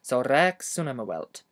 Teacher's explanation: Remember to pronounce the hewelt without a glottal stop at the beginning.